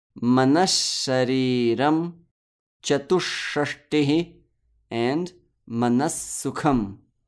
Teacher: The Visarga will turn into the sibilant sound that follows it.